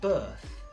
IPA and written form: bɜːθ (Birth)